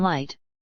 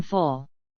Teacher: the lateral approximant /l/ has two main allophones, the clear or plain, as in light, and the dark or velarized, as in full. GA has dark L in most cases.